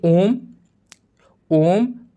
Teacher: जिन स्वरों के उच्चारण में दीर्घ स्वरों से भी अधिक समय लगता है, उन्हें हम प्लुत स्वर कहते हैं